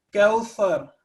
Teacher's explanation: یہاں پہ اس صورت میں کوثر اوپر کے دو دانتوں سے زبان کی نوک کو ٹکرانا ہے اور را جو ہے وہ تھک لیٹر ہے تو اس کو تھک پڑھنا ہے